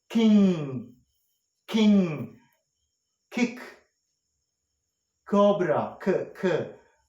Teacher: when we say the sound like king king kick cobra kirk our back of the tongue is against the velum or soft palate